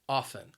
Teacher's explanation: two syllables and the stress is on that first syllable often the second syllable has that schwa sound which is an a sound it is the most common sound · it has two syllables and the stress is on that first syllable